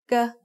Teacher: The sound of gokai as the initial consonant of a syllable is g. It is very similar to a hard G or an unaspirated K.